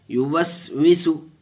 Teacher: یہاں سین کے اوپر جزم تو ہے لیکن حروف قلقلہ میں سے نہیں ہے سین، اس لیے قلقلہ نہیں ہوگا.